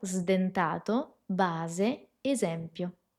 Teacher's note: la s sonora, que nos hace acordar un poquito un zumbido de una abeja